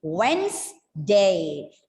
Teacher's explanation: It's a voiced plosive, da, right? · But in actual, there are only 2 syllables because the D in between is going silent there. And even, yes, the D is going silent.